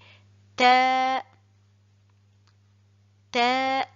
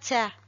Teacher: La lettre T, elle sort de l'extrémité de la langue en s'appuyant sur l'extrémité des incisives supérieures.